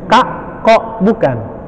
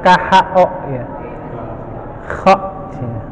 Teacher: Tenggorokan atas ya, atas kho ya. Kalau di kita padanannya itu nggak ada yang pas.